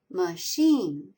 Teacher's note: Machine, it has two syllables. Sheen is accented.